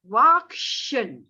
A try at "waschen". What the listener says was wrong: No, this waschen. There's no K. SCH become like a sh. Waschen. Waschen. This is wachsen. Waschen.